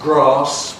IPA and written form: grɑːs (grass)